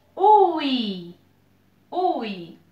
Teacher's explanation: 2 vogais numa mesma sílaba. Ditongo.